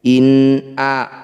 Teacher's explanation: In a, nun sukun bertemu hamzah, disebut bacaan idhar halki. Bunyi nun sukunnya baca dengan jelas, tidak usah dengung.